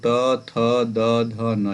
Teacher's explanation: इनका उच्चारण स्थल क्या होगा, तो दंत स्थान होगा।